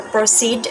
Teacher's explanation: so the stress is in the second syllable which is seed